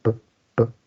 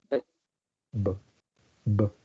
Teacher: Pues los dos son bilabiales, son explosivos, son orales, ¿no? El único rasgo que cambia es la vibración